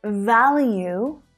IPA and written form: ˈvæl.juː (value)